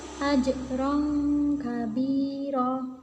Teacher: Ikhfa artinya samar, maka cara membacanya itu seperti bunyi huruf eng.